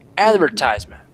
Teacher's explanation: With an accent on the first syllable.